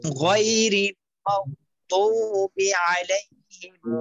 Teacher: এরপর আলাইহিম হলো দ টান দিতে হবে এবং দদের উচ্চারণটা ঠিক করে পড়তে হবে, মোটা করে পড়তে হবে